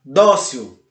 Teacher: A palavra dócil também é acentuada, termina em L, ele termina em L e a sua sílaba tônica é a penúltima, dó, dócil. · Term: paroxítona